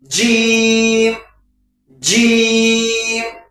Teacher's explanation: زبان کا جڑ جو ہے اوپر کے تالو سے ملائیے، جیم، پوری طاقت کے ساتھ بولیے، بعض لوگ اس کو زا کی آواز میں لے لیتے ہیں تو نہ زا نہ ضاد نہ زا، الگ طریقے سے بالکل جیم جیم۔